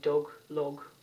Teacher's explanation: british people would pronounce this short o a little differently they would say dog log it's a short rounded vowel